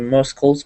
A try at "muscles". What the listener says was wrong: Not muscles, but say that again. Nope, there's no k. The C is silent.